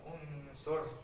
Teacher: Ini salah satu huruf ikfa ya, nun mati bertemu dengan sod, jadi dibacanya samar-samar unsur. Nah, samar-samar antara idhar dan apa, idgham ya, ikfa.